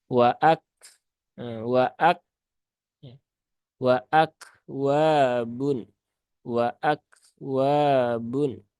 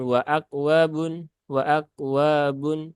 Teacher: satunya ya Ada sifat syiddah dan juga sifat Hames ya jadi keluarkan dulu sifat syiddahnya ya setelah itu kemudian keluarkan hamsnya